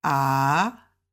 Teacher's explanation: is down and up, third tone